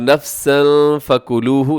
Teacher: تنوین ہے، تنوین کے بعد فا ہے، یہاں پہ کریں گے اخفا